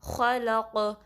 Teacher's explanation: خواہ کو تھوڑا پر پڑھنا ہے، یعنی کہ نارمل وے میں خواہ نہیں پڑھنا بلکہ خواہ، اور اس کی خراش بھی واضح کرنی ہے ، پھر اگین قاف ساکن ہے تو اس پہ قلقلہ ہوگا،